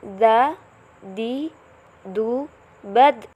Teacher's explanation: huruf dza cara melafalkannya seperti kita membaca huruf ta dia memantul dalam keadaan mati huruf da terdengar suaranya memantul